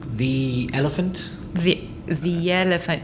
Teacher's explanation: you should say thee before a vowel sound